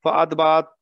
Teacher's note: فاتبہ تا کا ہمس کریں گے